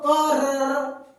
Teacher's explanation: तो जो र है वो इसलिए प्रकंपित होता है क्योंकि हमारे इसके उच्चारण में जीभ वाइब्रेट करती है।